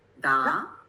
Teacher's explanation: the second tone is like a question mark